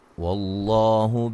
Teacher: لفظ اللہ کو موٹا ادا کریں گے